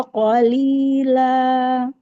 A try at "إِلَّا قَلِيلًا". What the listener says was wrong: Illa qalila. Jangan dinaikkan la. La. Lainnya naik.